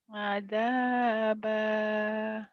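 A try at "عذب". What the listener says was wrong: ada zal azaba azaba.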